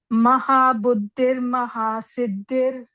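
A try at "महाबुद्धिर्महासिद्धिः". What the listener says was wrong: Yeah, so instead of saying Buddhir, you can try to say the first da is same da. Second one is the Mahaprana. So Mahabuddhir Mahasiddhir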